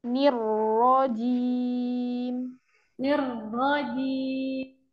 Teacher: Ninya jelas dulu kasrohnya. Jadi kasrohnya selesaikan, baru ke ro yang tebal.